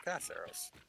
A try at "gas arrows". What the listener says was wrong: It sounded like you said grass arrows, not gas arrows.